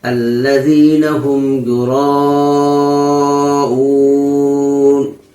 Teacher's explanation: الذین هم یراؤون، اب اون جو کر رہے ہیں تو ظاہر سی بات ہے کہ حرف مد کو تو 1 الف کی مقدار کھینچتے ہیں، لیکن یہاں پہ ہم زیادہ کھینچ رہے ہیں۔ الذین هم یراؤون، تو یہ مد عارض وقفی ہوگا۔